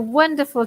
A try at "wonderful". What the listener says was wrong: Remember that wonderful, it's not with the A, but with an O.